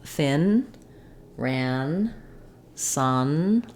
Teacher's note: So you want to make sure that you can feel the tongue is lifting and sealing in the front for the letter N. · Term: n sound